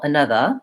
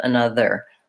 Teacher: British English, Indian English, they tend to use the schwa vowel